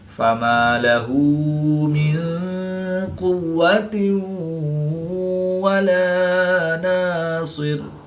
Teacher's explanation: نون ساکن کے بعد قاف حروف اخفا میں سے ہے تو یہاں پر اخفا یعنی غنہ زمانی کر کے پڑھیں گے. دو زیر کی تنوین کے بعد واو حروف ارملون میں سے ہے تو یہاں پر ادغام مع الغنہ ہوگا یعنی غنہ کر کے پڑھیں گے